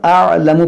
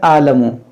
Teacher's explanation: देखिए यहाँ पर अअलमु पढ़ना है, आ, बाज़ लोग क्या पढ़ते हैं आलमु, ये आइन की आवाज़ नहीं निकलती है, तो आपको यहाँ पर आइन की आवाज़ महसूस होनी चाहिए।